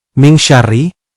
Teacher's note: Contoh pada ayat 4, nun mati bertemu shin, min syarri, adalah hukum ikhfa yang harus dibaca samar dan berdengung